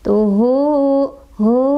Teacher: Huruf hidupnya itu yaitu ta barisnya domah ya, huruf sebelumnya, dan huruf setelahnya adalah ha barisnya fathah huruf hidupnya, dan huruf setelahnya bukan hamzah, itu kan ha bukan hamzah, artinya si ha domirnya dibaca 2 ketukan ketika disambung ya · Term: Madsilah qosiroh